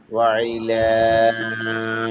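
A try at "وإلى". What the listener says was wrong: একটু পাতলা হবে। ওয়া আইলা, এরকম একটু আইনের মতো হয়ে গেছে, একটু পাতলা হবে। ওয়া ইলা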